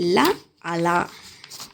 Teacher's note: పార్శ్వం అనగా ప్రక్క జిహ్వ యొక్క ఇరు పార్శ్వాల నుండి వాయువు నిర్గమించుటచే పుట్టే ధ్వనులు. జిహ్వాగ్రం పైనున్న స్థానానికి తాకినప్పుడు గాలి నాలుకకు ఇరువైపులా రావటం వల్ల పుట్టేవి. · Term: పార్శ్వికం